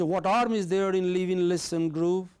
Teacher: Class related, you know, in if you go to London, you find, you know, those girls, shop girls, taxi drivers and hotel waiters, a lot of them speak what is called Cockney. In Cockney, they do not pronounce the initial H at the beginning of the word.